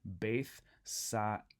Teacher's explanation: the alpha iota is not a diphthong. Instead, we need to pronounce both of those vowels individually